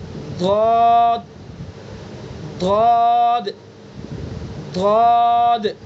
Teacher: زبان کی کروٹ اور اوپر کی ڈاڑوں کی جڑ · زبان کی کروٹ کو اوپر کی ڈاڑوں پر لگائیے، بائیں کروٹ کو بائیں ڈاڑوں پر لگائیے اور ادا کیجئے.